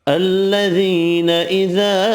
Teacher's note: یا مدہ ایک الف کی مقدار میں کھینچ کر پڑھیں گے